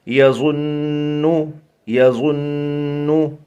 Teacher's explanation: یا زبر یا ضا نون پیش ظن نون پیش نو یظنو یظنو. نون کے اوپر تشدید ہے تو غنہ ہوگا